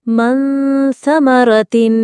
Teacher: اخفا، چھپانا غنہ کے ساتھ۔